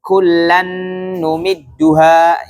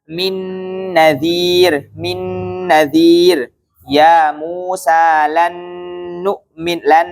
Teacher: Nun yang pertama udah dibaca, langsung masuk ke nun yang kedua, maka namanya idgham